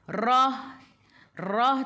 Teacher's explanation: Wal akhirah, rah tu ta, ra kena baca tebal sebab ra baris atas, matikan dengan ta marbutah.